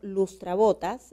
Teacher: la sílaba tónica se encuentra en Bo